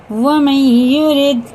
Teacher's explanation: نون ساکن کے بعد یہ پہ شد ہے تو یہ بھی غنہ کے ساتھ پڑھیں گے